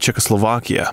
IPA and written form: ˌʧɛkəsloʊˈvɑkiə (Czechoslovakia)